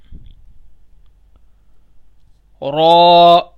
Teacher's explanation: را کو بھی موٹا کریں گے، موٹا پڑھیں گے، تفخیم کر کے پڑھیں گے، یعنی پر کر کے موٹا کر کے پڑھیں گے۔